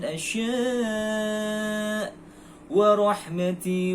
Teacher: huruf ra yang terdapat di dalam ayat tersebut dibaca secara tafkhim atau tebal dikarenakan sebab adanya harakat Fathah di atasnya di dalam ayat tersebut